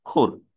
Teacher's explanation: শেষে এসে একটা ব্যঞ্জন উচ্চারিত হয়েছে কিন্তু ব্যঞ্জনের সঙ্গে কোন স্বরধ্বনি উচ্চারিত হয়নি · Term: ব্যঞ্জনান্ত অক্ষর